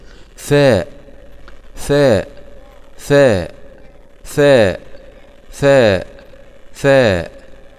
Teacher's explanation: مخرج الثاء مهم، طرف اللسان مع أطراف الثنايا العليا